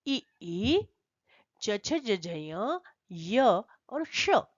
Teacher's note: इनका उच्चारण स्थान है तालू ये तालव्य वर्ण कहलाएंगे · ई माने ई, ई चू, चू माने चवर्ग, य और श, इनका उच्चारण स्थान है तालु